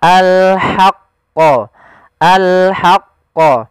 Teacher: huruf ha kecil yaitu kita mengeluarkan dari tengah tenggorokan kita ha disertai dengan nafas